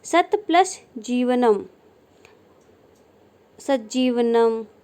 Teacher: त के बाद ज आने पर त का ज में परिवर्तन हो जाना। त के बाद ज आए तो ज की जगह त का ज में परिवर्तन हो जाएगा।